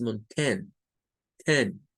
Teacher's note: Es el schwa unido a la T y a la N.